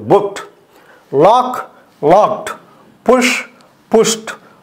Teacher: దానికి సంబంధించిన పాస్ట్ టెన్స్లో కానీ పాస్ట్ పార్టిసిపల్లో కానీ ఉన్నటువంటి డి అనేది టీగా పలకబడాలి. బుక్డ్ అనాలి, బుక్డ్ అనకూడదు. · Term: టీ సౌండ్